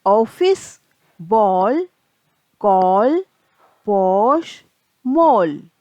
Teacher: ना तो पूरी तरह से आ होता है और ना ही पूरी तरह से ओ होता है। इसका उच्चारण होता है औ।